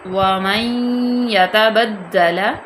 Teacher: نون ساکن کے بعد یا آگے یہاں پہ ادغام ہوگا